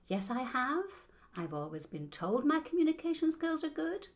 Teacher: Australian questioning intonation aqi where you lift your voice at the end of a sentence everything you say will start to sound like you're asking a